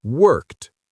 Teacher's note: It's B, t, worked. We match the unvoiced consonant k with the unvoiced t.